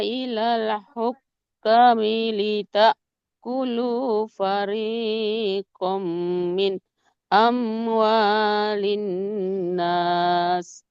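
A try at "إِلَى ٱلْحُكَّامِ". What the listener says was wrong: Ilal hukam. Nah, di sini kan fathah kafnya ketemu alif. Berarti dibacanya gimana, Bu? Panjang ya, tadi kelewat.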